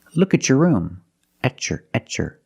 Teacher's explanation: When you have a T before a Y in two separate words, and you link the pronunciation of the two words, you will hear the ch sound.